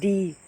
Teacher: The consonants sounds T, N and D are all alveolar consonants